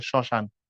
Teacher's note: কিছুটা নাকের ঝোক পড়ে আর কি। শুরুতে যদি মফলা যুক্ত হয় কিছুটা নাকের ঝোক পড়ে